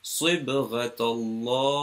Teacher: Note how this sad is with a round, so I'm pronouncing with a round mouth, even though it's a kasra